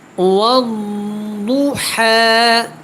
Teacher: واؤ کو جب ضاد کے ساتھ ملائیں گے تو یہاں پہ آپ نے دھیان رکھنا ہے، اس کو آپ نے پر پڑھنا ہے، موٹا پڑھنا ہے، اور اس کے بعد ہا کے اوپر کھڑا زبر ہے اور اس کے ساتھ یا ہے، لیکن آپ نے کیا کرنا ہے، وقف کی صورت میں جیسے یہ لکھا ہوا ہے اس کو آپ ایسے ہی ادا کریں گے، والضحیٰ، ٹھیک ہے۔